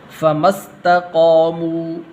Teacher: میم کو سین کے ساتھ ملانا ہے، ٹھیک ہے، یہ الف درمیان میں گر جائے گا